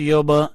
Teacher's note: یہاں با کے اوپر بھی کلکلہ کرنا ہے، با کو بھی اٹھانا ہے